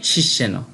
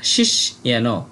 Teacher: এখানে আমরা বাংলায় বললে বলতাম শিষ্যেন, কিন্তু আমরা যদি সংস্কৃত গ্রন্থে এই শব্দটা পাই তাহলে উচ্চারণ করব শিস ইয়েন। এখানে দেখুন যেহেতু মূর্ধন্য স যুক্ত বর্ণ রূপে রয়েছে তাই মূর্ধন্য স এর উচ্চারণটা অর্ধেক হবে শিস।